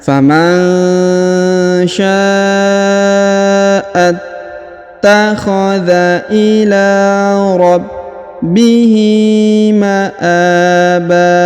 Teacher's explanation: tanwin pada huruf ban dirubah menjadi A atau fathah, lalu dipanjangkan 2 harokat ya, karena kita sudah berada di ujung ayat atau di ujung bacaannya.